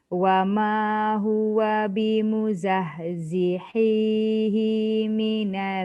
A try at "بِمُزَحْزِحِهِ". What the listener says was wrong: Hi dah betul dengan hi. Tapi hi tak panjang. Hi tu yang panjang. Dia terbalik tadi.